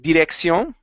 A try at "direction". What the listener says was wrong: your tongue is still hitting the top of your mouth